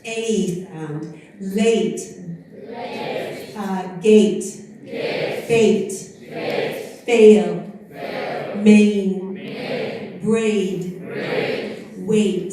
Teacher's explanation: now to the eighth late date fete fail maybe great wait so that's a long vowel and again there's going to be a diphthong